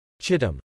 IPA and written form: ˈtʃɪt əm (Chittam)